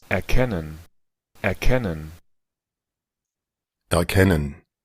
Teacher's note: Esa R pasa a ser esta A media centralizada.